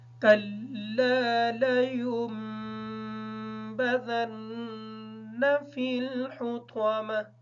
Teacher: لینبذن کی جو نون ہے یہ نون مشدد ہے، اس پر غنہ ہوگا